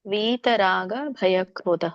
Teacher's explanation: वीतरांग भय क्रोध ರಾಂಗ್ ಅಲ್ಲ, ಅಲ್ಲಿರೋಕೆ ಅನುನಾಸಿಕ ಇಲ್ಲ.